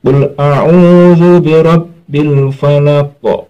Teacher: Kalau ada huruf qalqalah, qad bujatin, qabdal jim to, itu di akhir kalimah namanya qalqalah kubra, pantulannya lebih besar · al-nya dibaca jelas tanpa mengeluarkan bunyi e ya. Tanpa mengeluarkan bunyi e. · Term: al-qamariyah